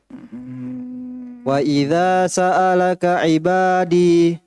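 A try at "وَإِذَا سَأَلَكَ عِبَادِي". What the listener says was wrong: Nah, perhatikan itu. Ibadi. Kenapa antum panjangkan? Berarti apa yang setelahnya itu? Iya, walaupun dari titiknya. Tapi karena dia tidak berharokat, sebelumnya kasroh. Maka pastikan dia ya. Nah ini, jangan antum kira itu alif bengkok. Ini kan, ibadiyah. Kecuali kalau dia diharokati baru. Baru kita baca ibadiyah.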